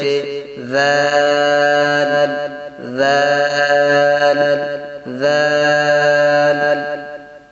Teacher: ذال کا مخرج کیا ہوتا ہے؟ زبان کی نوک سے جب اوپر والے دونوں دانتوں کے سرے سے لگے تو اس سے ذال ادا ہوتا ہے